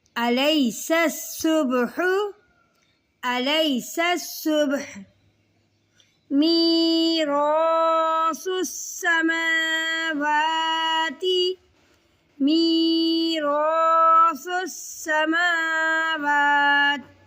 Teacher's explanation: تا ہے باریک کر کے پڑھیں گے اور سین ہے سختی اور سیٹی کا بہت دھیان رکھیں گے